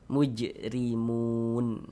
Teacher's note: Huruf ra kalau dia memiliki harokat kasroh, ini baris satu ke bawah, harokat kasroh atau tanda baca kasroh. Huruf ra yang memiliki harokat kasroh maka dibaca tarkik, dibaca tipis. Sehingga pangkal lisan kita tidak naik terangkat ke atas, kita tipiskan huruf ra-nya.